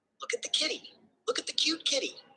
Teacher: this sentence is high pitched to catch the baby's attention rhythmic with a pattern of repetition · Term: motheres